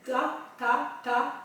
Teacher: la langue claquer sur le palais dur devant pour le T. Toujours une voix blanche pour l'instant.